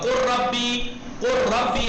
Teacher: اب لام نہیں پڑھا جا رہا دیکھیے رے میں ادغام ہو گیا